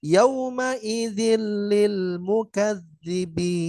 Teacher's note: nunnya hilang, langsung dimasukkan ke huruf lam